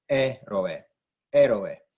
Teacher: Héroe, same thing, but instead of it being the last syllable it's stressed, it's not the second to last syllable it's stressed, it's the third from the end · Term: antepenultimate syllable